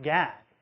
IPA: gæg